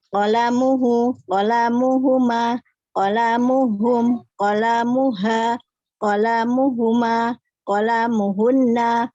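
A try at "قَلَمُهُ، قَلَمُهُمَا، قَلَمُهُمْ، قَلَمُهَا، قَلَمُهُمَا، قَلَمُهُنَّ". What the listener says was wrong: Lamnya jangan panjang-panjang.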